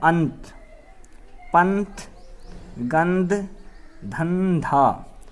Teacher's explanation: ता वर्ग में कौन कौन से अक्षर आते हैं, ता आता है, था आता है, दा आता है, धा आता है। जहाँ पर भी ये चार अक्षर अंग की बिंदी के बाद यानी अनुस्वार के बाद आएंगे तो वहाँ आवाज़ देगी ये नै का